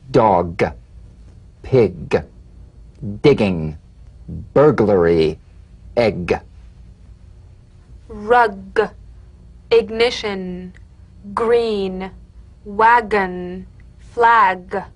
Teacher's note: You'll feel a crisp tap and a voiced pulsation of the back of the tongue. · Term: drum beat G